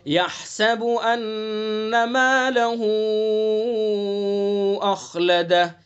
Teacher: ہا کو حلق سے، ہا کا مخرج وسط حلق